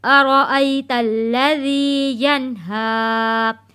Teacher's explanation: ہا کے اوپر کھڑی زبر ہے تو ایک الف کے برابر اس کو ہم کھینچتے ہوئے